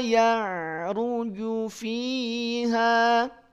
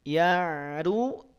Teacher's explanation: hati-hati ain sukun harus dialirkan sedikit suaranya.